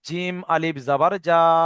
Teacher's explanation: একে আলিফ মাদ্দা বলে। আলিফ মাদ্দাকে এক আলিফ পরিমাণ টান দিয়ে পড়তে হয়।